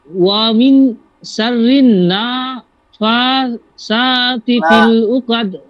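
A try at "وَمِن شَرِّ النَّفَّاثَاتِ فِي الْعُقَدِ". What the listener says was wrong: হচ্ছে না অমিন শাররিন নাফাসা নাফাসা নাফাসা ফাতে টান আছে সাতে টান আছে অমিন শাররিন নাফাসাতি ফিল উকাদ হ্যাঁ অমিন শাররিন নাফা নাফা নাফা বলুন নাফা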